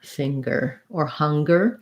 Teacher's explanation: when we have an ng it is an ng sound plus a g